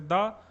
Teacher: ऊपर के दांतों से जो है जीभ जब टकराती है तो वो होते हैं आपके दंत व्यंजन